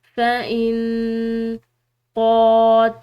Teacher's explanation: آگے دیکھیں، فَإِن قَاتَلُوكُمْ، یہاں پر جو ہے یہ نون ساکن ہے، اس کے بعد قوف حروف اخفا میں سے ہے تو یہاں پر ہم اس نون ساکن پر اخفا کریں گے، فَإِن قَاتَلُوكُمْ، ٹھیک ہے۔ یہاں پر قوف کو بھی لمبا پڑ جائے گا اور لام کو بھی، کیونکہ لام کے بعد واو ساکن ہے اور قوف کے اوپر کھڑی زبر ہے